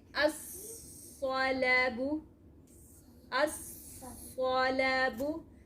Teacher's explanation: You know lam doesn't pronounce. You can see lam has no harka. That's why lam doesn't pronounce. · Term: Shamsiya